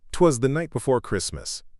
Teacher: Anapestic, unstressed, unstressed, stressed.